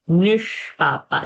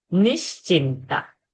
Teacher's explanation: Nishpapa's Shakara is Murdhani. When we say Nishchinta, that sh is not Murdhani.